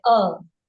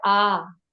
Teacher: रूप है आ यह जो वर्ण है यह दीर्घ है क्योंकि इसके उच्चारण में अ से दुगुना समय लग रहा है